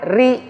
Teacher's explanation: Tapi kalau ri itu bacanya tipis, smile, ri, nggak boleh maju bibirnya.